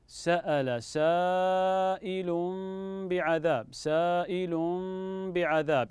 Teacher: وهنا نقلب التنوين ميما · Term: اقلاب